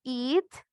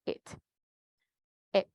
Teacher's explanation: Entonces suave, suave, corto el sonido. Tienen que cortarlo ustedes, no alargarlo tanto cuando es una I corta, una pronunciación de I corta.